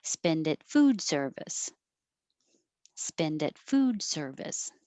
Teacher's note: I went up on spend.